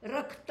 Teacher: रक्त म्हणताना र वर जोर देतो